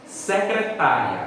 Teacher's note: secretária é uma palavra paroxítona porque a penúltima sílaba é a mais forte